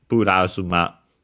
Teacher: it's actually pronounced with uh a flap or tap